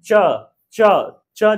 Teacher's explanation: जो मेरा जीभ है ऊपरी हिस्सा में अपने मुंह के ऊपरी हिस्सा में आगे के भाग में वो टच कर रही है। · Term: तालु